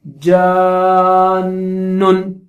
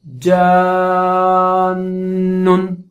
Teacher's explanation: نون پہ تشدید ہے تو وہاں پہ غنہ بھی ہوگا